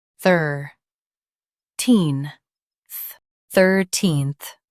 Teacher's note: Emphasize thir and soften teen-th.